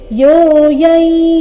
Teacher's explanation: ಅನುಸ್ವಾರದ ಉಚ್ಚಾರಣೆ ಇಲ್ಲಿ ನಾಸಿಕ ಯ ಬರಬೇಕು